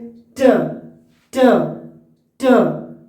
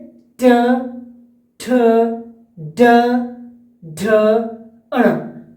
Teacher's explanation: रेट्रोफ्लेक्स जीभ के सिर को मोड़कर, जीभ के जो सर है उसको मोड़कर कठोर तालु की ओर घुमाने से ध्वनि बनता है। ठीक है, जैसे ट ट ट। · देखिए टंग हमारा जो जीभ है वो मुड़ रहा है और जोर लग रहा है।